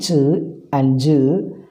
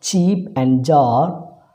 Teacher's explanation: The air from the lungs is thus imprisoned behind the 2 closure. The active articulator is removed slowly from the passive articulator and the air escapes with slight friction. The sound ch and j, as in the words cheap and jar, are the 2 affricates that occur in English.